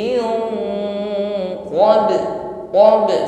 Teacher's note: sempurnakan Qalqalah pada huruf ba